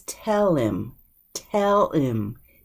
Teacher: the H is just dropped